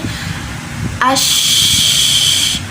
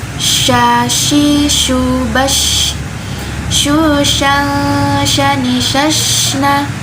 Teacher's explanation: Dan dia juga mempunyai sifat yang namanya tafashi atau udara menyebar. Jadi ketika kita mensukunkan huruf sya ini ash, maka ada udara yang menyebar